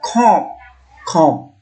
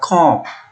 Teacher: Ketika kita sampai ke huruf O, itu kita om bacanya. Udara keluar melalui hidung. Sehingga kita baca kom. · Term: sengau